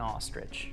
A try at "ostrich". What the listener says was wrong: You're saying it like R-I-D-G-E. It's I-C-H. Ostrich.